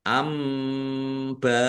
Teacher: mim sukun bertemu dengan huruf alif bacaan izhar syafawi dibaca jelas